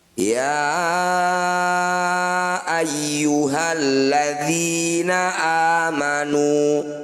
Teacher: Cara bacanya ya yang bertanda layar kita panjangkan 5 harokat atau 5 ketukan. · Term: mad jaiz munfasil